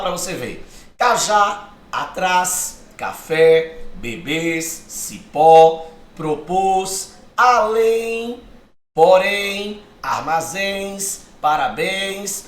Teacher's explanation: a sílaba tônica é a última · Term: oxítona